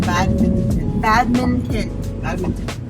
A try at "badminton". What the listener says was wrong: Don't say it slow, because that's what you... No, I think the T you pronounce it. Badminton.